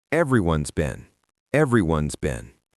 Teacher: In spoken English, we almost always contract everyone and has into everyone's. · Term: connected speech